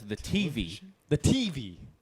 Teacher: Accent on the T instead of the V